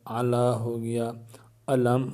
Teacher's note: یہاں لام ہے، پہلے زبر بھی ہے، لیکن یہ اللہ عز و جل کا لام نہیں ہے، تو اس لام کو پر نہیں پڑھیں گے